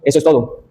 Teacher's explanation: Entonación descendente para dar una conclusión